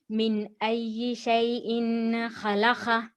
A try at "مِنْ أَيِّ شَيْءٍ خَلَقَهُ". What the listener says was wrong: دیکھیے آپ سکون سے سنیے، ایک ہی غلطی ہوتی ہے آپ کی ہمیشہ. صرف حرف لین کو آپ معروف نہیں پڑھتے، مجهول پڑھتے.